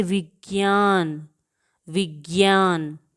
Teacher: ज और इया की ध्वनि आती है